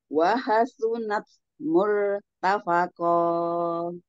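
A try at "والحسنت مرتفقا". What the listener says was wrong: Ya, sudah bagus tapi jangan dinaikkan ya. Wahal sunat murtafaqo.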